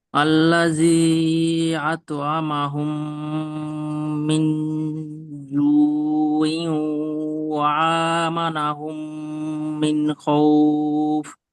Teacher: মিমের উপরে তাসদিদ, মিম সাকিনের পরে মিম, এই মিমটা গুণনা হবে গুণা হবে। ঈদগামে স্বাভাবিক, তারপরে নুনটাও গুণনা হবে।